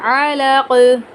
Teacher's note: यहां पर हम गुना नहीं करेंगे। और कफ को साकिन करते हुए कलकला करके पढ़ेंगे।